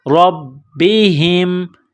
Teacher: را کو موٹا کرنا ہے، را کو با کے ساتھ ملانا ہے، پلس کرنا ہے.